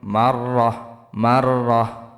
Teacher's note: থামলে শেষের হরফকে যজম করিয়া পড়িতে হয়, এবং এখানে গোলতা, গোলতা হা হয়ে যাবে